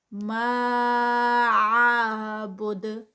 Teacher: ما پہ جو ہے وہ مد ہے، مد پھر یہ منفصل ہے کیونکہ آگے نیکسٹ ورڈ سٹارٹ ہو رہا ہے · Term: مد منفصل